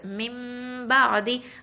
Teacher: ஸோ மிம்பா ஆதி மின் அப்படின்லாம் நம்ம சொல்லக்கூடாது. மிம்பா ஆதி அப்படின்னு நம்ம அந்த மீமோட குன்னாவை தான் மறைச்சு நம்ம ஓதணும்